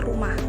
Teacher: Dalam bahasa Indonesia, penekanan suku kata umumnya jatuh pada suku kata pertama dalam semua kata. Misalnya dalam kata rumah, penekanan jatuh pada kata ru.